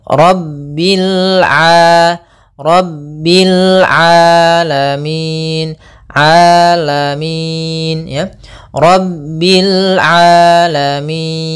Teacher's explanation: Kemudian di sini huruf ain. Hati-hati jangan sampai merubah huruf ainnya menjadi hamzah. Banyak yang terjadi kesalahan dalam pelafalannya yaitu mengganti dengan alif atau hamzah.